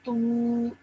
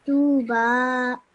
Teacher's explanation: So stretch that tu sound out for 2 seconds.